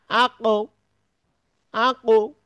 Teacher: কলকলাটি হচ্ছে অর্ধেক পেশের মত উচ্চারণ হবে যেমন আক এই কলকলা করার পরে মুখটাকে ঠোট দুইটাকে গোল করে দিতে হবে তাহলে এটা সঠিক উচ্চারণ হবে।